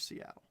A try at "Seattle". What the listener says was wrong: Siddle. Any true Washingtonian pronounces it Seattle. We do not say our T's.